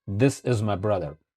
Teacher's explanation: Now the next we have a TH sound, like a D sound.